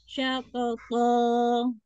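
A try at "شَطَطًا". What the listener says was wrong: Dikit lagi itbaknya, tapi ini sudah cukup ya.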